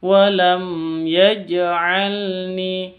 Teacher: mim sukun bertemu dengan ya, bacanya jelas, jangan dibaca dengung ya, tapi jelas karena izhar safawi. Walam ya, mim sukunnya jelas, ya-nya juga jelas.